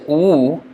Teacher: Now the sound is stopped by, or is constricted by the lips, whereas A and E, the mouth is open.